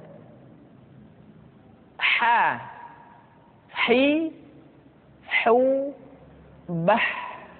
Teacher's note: huruf ha dikeluarkan dari tengah-tengah tenggorokan